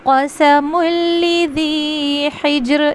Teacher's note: یسر واللیل اذا یسر هل فی ذالک قسم لذی حجر، اس کو پڑھتے ہوئے یہاں پہ مسٹیک ہو جاتی ہے، لذی کے اوپر یہاں پہ لذی، یہاں پہ کیا خیال رکھیں گے، یہ لام کے نیچے زیر ہے، ٹھیک ہے، قسم الذی نہیں پڑھنا بلکہ قسم الذی حجر، جیم پہ قلقلہ کریں گے